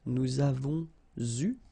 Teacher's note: so here you can see that we make double liaison